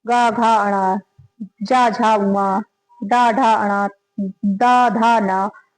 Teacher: वर्गीय व्यंजनों का तीसरा चौथा पांचवा वर्ण सघोष होता है